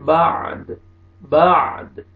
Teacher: یہاں پہ میں نے وقف کیا دال کو، تو دال پہ قلقلہ کریں گے